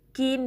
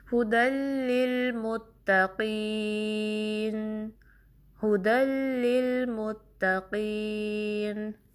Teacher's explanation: زبان کا پچھلا حصہ اوپر ریز ہوتا ہے، اٹھاتے ہیں، اور اس طرح قاف جو ہے اس کی ادائیگی میں تھوڑا سا موٹاپا پیدا ہوتا ہے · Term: حروف مستعلیہ